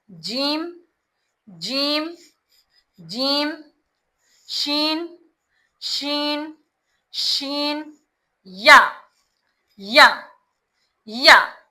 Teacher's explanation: वस्त लिसान जबान के बीच का हिस्सा और ऊपर तालू से लगाकर अदा होता है। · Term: जीम शीन या